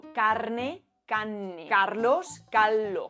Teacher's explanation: la R delante de N o de L se pierde y dobla la consonante siguiente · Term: asimilación RN y RL